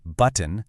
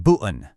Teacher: Well, it's that little catch you make in the back of your throat. Instead of saying a really sharp t sound like in the word button, a lot of times you'll hear a little stop like button. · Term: glottle stop